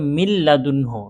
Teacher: নুন সাকিন অথবা তানভীনকে গুন্নাহ ছাড়া মিলিয়ে পড়তে হয় · নুন সাকিনের পরে লাম আসছে এখানে কোন গুন্না হবে না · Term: ঈদগামে বেলাগুন্না